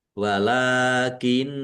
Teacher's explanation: Walakinna lam fathah berdiri mad thobi'i panjang dua harakat. Nun tasdid dibaca ghunah atau mendengung. Ditahan biar tampak mendengung.